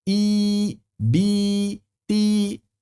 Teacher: Sedangkan huruf ya ya mad sekalipun lidah tengah lidahnya harus naik supaya sempurna kasrahnya. Walaupun enggak membentuk konsonan.